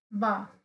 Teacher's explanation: जब हम बा का उच्चारण कर रहे तो हमारे दोनों होट है वो क्या हो रहे आपस में टच हो रहे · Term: ओष ध्वनि, ओष्ठ्य ध्वनि